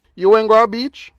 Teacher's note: it's no different from the sentence meaning you went to the beach except that it has Rising intonation